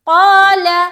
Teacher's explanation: اب یہاں بتایا تھا کہ الف جب بھی موٹے حرف کے ساتھ آئے گا وہ بھی موٹا پڑھا جائے گا، تو یہ جو نقطے والی قاف ہے یہ موٹا ہے، حروف مستعلیہ میں سے ایک ہے، تو یہ موٹا پڑھا جائے گا، لہٰذا الف بھی موٹا ہو جائے گا